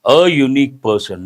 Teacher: the sound u, ya sound, that is a consonantal sound. Based on that, we have to say a unique person, not an.